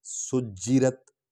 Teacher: جیم پر ہم نے سٹریس کیا ہے، زور دیا ہے کیونکہ اس پر شد ہے، شد والا حرف 2 بار پڑھا جاتا ہے۔